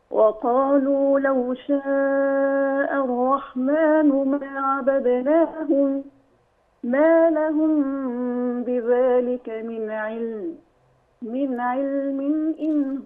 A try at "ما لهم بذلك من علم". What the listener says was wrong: لا، عندك وقف. ما لهم بذلك من علم، خلاص.